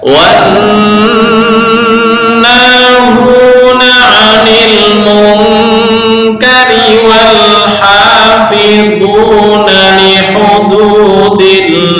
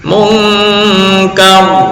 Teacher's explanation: Mungkari roknya jadi tarkik. Kenapa? Karena dibaca kasroh. Tapi ketika berhenti mungkar, tafkhim. Kenapa? Karena sukun karena wakof, dan sebelumnya berupa harokat fathah.